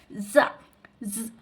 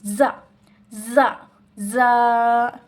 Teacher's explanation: زبان کی نوک اور سامنے کے اوپر نیچے والے 4 دانتوں کے کنارے سے ادا ہوتے ہیں